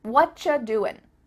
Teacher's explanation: we've cut out completely the word are. And the word you just becomes cha.